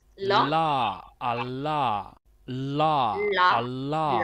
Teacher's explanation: a lateral approximant or a lateral sound is your la sounds